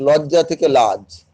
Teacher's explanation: অন্ত স্বরলোপ, বংশ থেকে বাঁশ, অন্তে স্বরধ্বনির বিলোপ ঘটছে